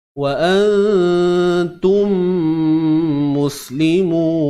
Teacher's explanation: Apa-apa pun bacanya kena dengung idgham mithlain, memasukkan bunyi mim mati ke dalam mim yang kedua, ataupun namanya disebut sebagai idgham syafawi.